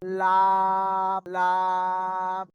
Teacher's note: এই যে সামনে দুটো দাঁত আছেন এর গোড়ার মাটির সাথে লাগিয়ে উচ্চারিত হয়